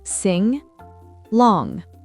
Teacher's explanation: On ne doit pas entendre le G à la fin.